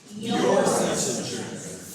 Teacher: Let's stress the word your.